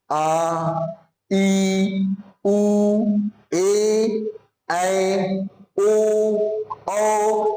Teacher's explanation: हर्ष स्वर से कुछ दुगना समय लगेगा उसे हम लोग क्या कहेंगे, दीर्घ स्वर कहेंगे। जैसे आ ई उ ए ऐ ओ औ, ये बाबू कौन सा वर्ण है, तो हम लोग का दीर्घ स्वर वर्ण है।